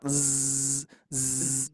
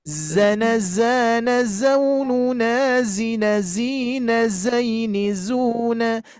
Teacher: Ujung lidah menempel ke gigi seri bawah dan juga bunyinya seperti lebah ataupun pesawat. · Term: huruf za